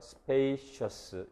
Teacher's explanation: 합치면 요 스하고 이 글라이드 이 발음하고 합쳐지면 spacious 이렇게 됩니다. 그래서 스도 아니고 이도 아닌 제3의 소리로 바뀌니까 융합돼서 제3의 소리가 되니까 coalescent assimilation 융합적 동화라고 부르고요